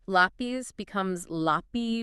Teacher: Lapis becomes lapy without that final Z sound.